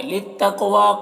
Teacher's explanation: कौफ को पुर पढ़ेंगे और कलकला करेंगे। वाव में खड़ा ज़बर है, इसे एक अलिफ के बराबर खींचेंगे।